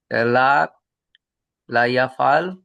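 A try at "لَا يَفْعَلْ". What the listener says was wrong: লা, লম্বা হবে, লা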